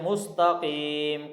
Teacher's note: قاف کو موٹا پڑھیں گے، اس کے بعد یا مدہ ہے لمبا کر کے پڑھیں گے